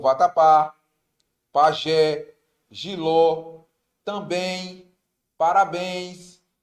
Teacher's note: percebam que a última sílaba é mais forte · Percebam que a última sílaba é a mais forte. É como se você estivesse chamando a palavra como se fosse um amigo seu, tá? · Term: oxítona